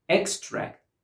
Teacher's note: As a noun, we put the stress on the first syllable and we pronounce it extract.